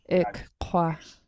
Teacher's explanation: There's going to be a little puff of air between the two Ks